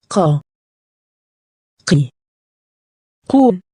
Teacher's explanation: It sounds like K except it's deeper. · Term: qaf